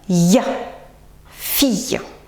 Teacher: Je pousse l'index vers l'avant, bien que je sente ma langue contre le fond du palais à plat pousser vers le haut. Donc ça donne ya, fille. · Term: semi-consonnes ou semi-voyelles